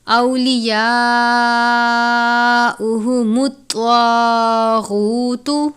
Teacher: طوا پر پڑھتے ہیں، طوا حرف مستعلیہ میں سے ہے، طوا کو تا کی طرح نہیں پڑھنا کیونکہ تا یہاں پر بھی ہے، طواغوتو میں تا کی طرح نہیں پڑھنا کیونکہ طوا اور تا یہ دونوں حروف قریب الصوت ہیں، ان کی آوازیں ملتی ہیں لیکن مخارج میں فرق ہے۔ · اولیاءہم الطاغوت، حمزہ واو زبر او، واو ساکن سے پہلے زبر ہے واو لین، یا کے اوپر کھڑی زبر ہے 1 الف، بڑی مد ہے 4 یا 5 حرکات یا 4 یا 5 الف کے جتنا لمبا کر کے پڑھنا ہے۔